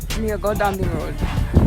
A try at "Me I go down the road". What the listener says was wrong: Me I go down the road. You can't be when it's talking Jamaican you have to be aggressive. Me I go down the road. Give me something more aggressive too.